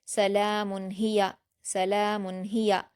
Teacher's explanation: اظہار میں غنہ نہیں کرتے ہیں اس لیے سلام کو جلدی سے پڑھ کر ہیا پڑھ دیں گے. سلام ہیا سلام ہیا ہیا میں ہا پر حرکت یا پر حرکت دونوں کو جلد پڑھیں گے.